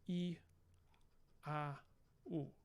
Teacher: you have this E high front, you have this A, which is low central or maybe low front, and you have this high back rounded vowel U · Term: 3 vowel system